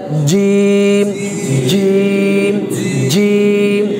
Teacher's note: এই জিমটা হচ্ছে জিহ্বার মধ্যখান উপরের তালুর সাথে লাগে একটু শক্ত করতে হবে কেমন জিম হরফটা একটু শক্ত হরফ সেক্ষেত্রে